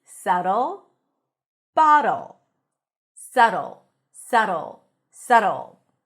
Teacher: There is no B and the T sounds like a very short D. · make it a very light d and then you pull the tongue in for a dark l. So it's not dl but the tension is here.